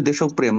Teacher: রফলা যখন মাঝখানে বসে শব্দের মাঝখানে বসে শব্দের মাঝখানে বসে তখন যে লেটারটার সাথে বসে ওটা ডাবল হয়ে যায়।